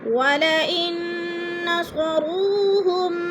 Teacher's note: وَلَئِن نون ساکن کے بعد نون مشدد ہے تو ادھر غنہ کریں گے، ناک میں آواز کو چھپا کر پڑھیں گے۔